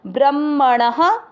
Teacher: ण में अ की मात्रा तो विसर्ग को पढ़ेंगे ह